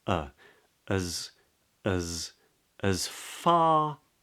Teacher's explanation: that starts with a schwa, as, because it's what's called a weak form · the S in as, which is pronounced uz in this context, is an actual Z, so it buzzes on the tongue. And you can feel it here in your throat if you put your hand there.